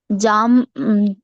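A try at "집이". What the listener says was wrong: नहीं, यहाँ पे इसको प ही बोलना है, प ही बोलना है।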